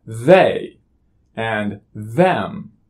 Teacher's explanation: seeing as this is a voiced sound we have to turn on our voicing which is the vibration in our vocal cords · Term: voiced interdental fricative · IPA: ð